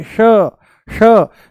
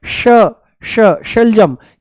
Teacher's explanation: जीभ को थोड़ा सा ऊपर घुमा करके तालू से लगा करके बोला जाता है श